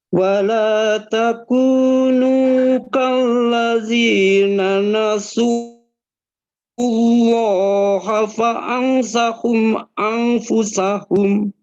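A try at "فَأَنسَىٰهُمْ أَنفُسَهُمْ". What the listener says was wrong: Panjangkan dulu angnya. Fa'ansahum anfusahum. Pas mimnya ditahan. Dari sahum. Fa'ansahum. Tahan dulu.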